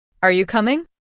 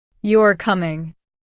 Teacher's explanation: The rising tone shows it's a question. The falling tone shows it's a statement. · Say this with a rising tone at the end.